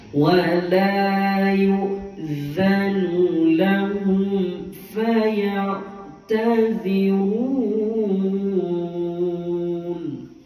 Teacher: Sini huruf zal 2 kali lidah keluar